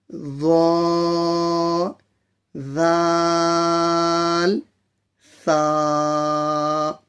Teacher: زبان کی نوک اوپر کے دو دانتوں کے کنارے سے ظا ذال ثا ادا ہوتے ہیں